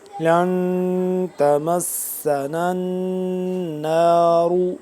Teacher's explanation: اخفا کیا یعنی کہ آواز کو ناک کے اندر لے کے جا کے پڑھنا